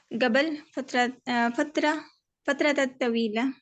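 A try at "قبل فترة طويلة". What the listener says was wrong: ता नहीं बोलना, कबल फतरत तवील है, बस इसको ऐसे बोल देते, फितरत तवील है। फितरत, क्योंकि आगे भी ता है ना, फितरत आवाज आएगी, फितरत तवील है, ऐसे इसको बोल सकते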